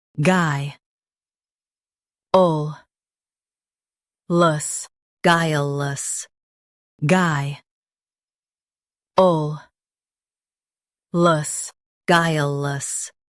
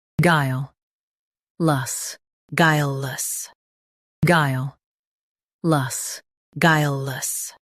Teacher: In US, stress guy. In UK, stress guile. Keep less soft.